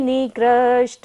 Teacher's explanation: निकृष्ट में कहाँ है, मूर्धन्य श है, तो मूर्धा से उच्चारण करेंगे।